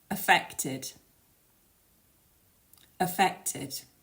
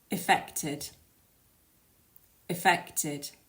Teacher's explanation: make that one a bit longer and a bit louder and the final syllable which has that Ed spelling is pronounced as a third syllable